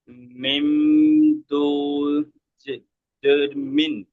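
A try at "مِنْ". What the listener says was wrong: দুজেরটা হবে না, কারণ তানবিনটা মিম হয়ে যাচ্ছে। তানবিন একটা যাবার জের, আর একটা যাবার দিলে তানবিন, তাহলে একটা যাবার বাদ যাবে। হ্যাঁ, একটা যাবার বাদ গিয়ে ওইটা মিম হয়ে যাচ্ছে, তাহলে মিম, মিম জের মিম, কি র,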